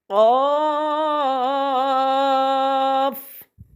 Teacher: قاف حروف مستعلیہ میں سے ہے، مد ہے، مستعلیہ میں ہونے کی وجہ سے اسے موٹا پڑھیں گے اور مد کی وجہ سے 5 الف کے برابر لمبا کھینچیں گے